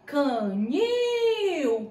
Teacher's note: Qual a sílaba eu demoro mais? No nil. Então, ela é oxítona.